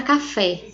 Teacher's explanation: a sílaba tônica da palavra café é o fé